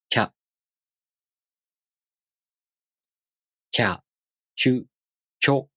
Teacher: You first make the tongue position of the ki consonant. Then you consciously put the J sound, again a really short one, before the a vowel. Then the tongue moves into position for the a vowel.